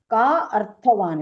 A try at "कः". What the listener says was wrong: No, not ka, it is kaha. So wherever that ko is written, like I everywhere if you see, vayam ihi paritushta val kalaihi tvam dukulaihi sam ihi paritoshaha nirvisheshaha visheshaha sa tu bhavati daridraha, not daridro, yasya trishna vishala manasi cha paritushte kaha arthavan kaha daridraha.